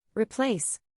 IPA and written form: rɪˈpleɪs (Replace)